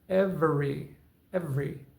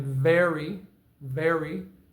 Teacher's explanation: Notice how the bottom lip comes up to the top teeth when I get to the V in the word however.